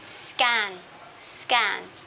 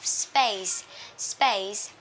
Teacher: Nếu như hai âm vô thanh đứng cạnh nhau, chúng ta sẽ đọc âm vô thanh thứ hai, tức là chữ K, chữ P và chữ T này, chúng ta đọc nhẹ như âm hữu thanh, tức là những âm vô thanh này bị hữu thanh hóa